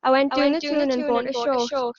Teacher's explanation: el pronombre, en lugar de decir I, dicen a